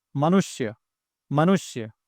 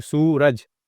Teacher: जब आप सु बोल रहे हैं तो यह र से मिलने में थोड़ा सा लेट हो रहा है। थोड़ा खींच के बोलना पड़ रहा है।